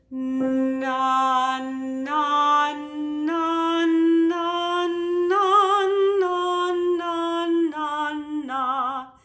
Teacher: You might be able to feel that back of the throat, soft palate lower a little bit and then relax as the air goes more through your mouth on the vowel.